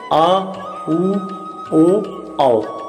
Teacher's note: जिन स्वरों के उच्चारण में जीभ का पश्च भाग ऊपर उठता है वो पश्च स्वर कहलाते हैं